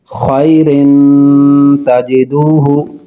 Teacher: نون تنوین کے بعد تا حروف اخفاء ہے، غنہ کریں گے۔